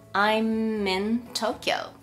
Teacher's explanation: 風に音が連結してくっついてしまいます。よく▁I'm▁in▁Tokyo▁という風に無という風にこう口が開いてしまう、▁M▁の後に口が開いてしまう方がいらっしゃいますけれども、これは正しくないです。▁ I'm▁で口を閉じたまま▁in▁に移動していってください。